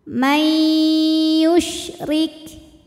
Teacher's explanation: karena nun sukun menghadapi huruf ya maka bunyi nunnya lebur ke ya Ma disertai dengung ditahan yanya menyebarkan angin di dalam mulut karena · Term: Idam bunah